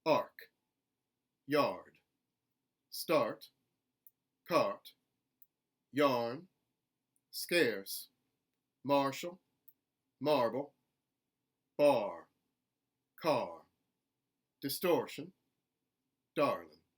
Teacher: Number 3, a consonant R in the middle of a word where the R sound is followed by another consonant. We're going to keep the R sound. It's going to be much like a General American R.